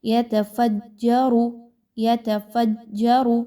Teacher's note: را کے اوپر چونکہ پیش ہے اس لیے اس را کو پر پڑھا جائے گا